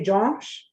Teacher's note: my tongue goes up to the roof of my mouth towards the back of my throat. And that's just how I've always known how to say Josh. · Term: nasal sound